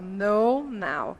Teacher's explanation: No, fechado. Now, aberto. Ó. No, now.